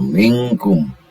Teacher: Solisan asfal, jadi dia itu maju sedikit dari makhraj kaf, ya. Maka ketika kita bunyikan suara nun mati ini, lidah ini kita persiapkan pada makhraj huruf kaf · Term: ikhfa